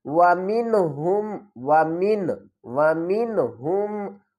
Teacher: نون کے اوپر ہم گنہ نہیں کریں گے، نون ساکن تو ہے لیکن اس کے بعد حروف ہلکی میں سے ہا آ رہا ہے، تو ہم یہاں پر گنہ نہیں کریں گے بلکہ نون کی آواز کو ظاہر کریں گے۔ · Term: اظہار